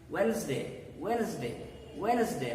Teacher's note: here again d is silent s gives the sound of z